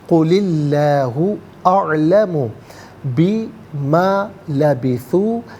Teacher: قل اللہ، قل میں لام کے نیچے زیر، اسے اسم اللہ کی حرف لام کے ساتھ ملائیں گے، درمیان میں سے الف حمزہ کو حذف کیا جائے گا۔ اسم اللہ کی حرف لام سے پہلے والے حرف کے نیچے یعنی لام کے نیچے زیر ہے تو اسم اللہ کی حرف لام کو باریک کر کے پڑھا جائے گا، زبر یا پیش ہو تو پر کر کے پڑھتے ہیں۔